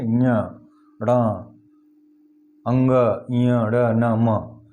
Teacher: ये नासिक नाकों से बोला जाता है, इसको अनुनासिक बोलते हैं।